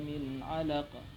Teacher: Nun mati bertemu ain yang harus dibaca jelas.